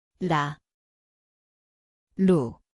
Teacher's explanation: ang lugar ay dulo ng dila, magaan na tap